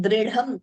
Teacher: Only the second dha is mahaprana. We shouldn't be saying the first letter also as mahaprana.